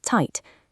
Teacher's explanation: Forget the buzzing English Z sound entirely. In German, it creates a sharp combined TS sound.